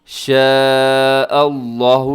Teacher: شاء اللہ، کیونکہ لفظ اللہ کے لام سے پہلے حمزہ کے اوپر زبر ہے تو آپ نے اس کو موٹا پڑھنا ہے